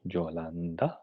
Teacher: aquí tenemos una n dental